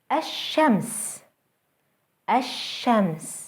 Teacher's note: notice how the Sun letter is doubled and how the L Sound is lost